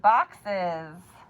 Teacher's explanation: that S at the end is making the second sound Z